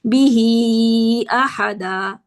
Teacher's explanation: بیہی والا جو ہے وہ صلہ کبریٰ ہے، اس کو 4 کاؤنٹس لمبا کریں گے